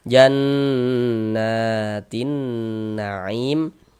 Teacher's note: dibaca idgham nih dari ti langsung masuk ke huruf nun · Nah, nah dibaca panjang mad thabi'i panjang dua harakat. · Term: alif lam syamsiyah